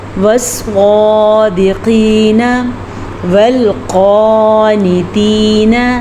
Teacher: نون زبر نا آخر میں صرف اور صرف نون زبر نا، اس سے زیادہ لمبا ہم نہیں کر سکتے۔